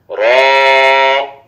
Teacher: জিহ্বার আগার পিঠ তার বরাবর উপরের তালুর সঙ্গে লাগাইয়া র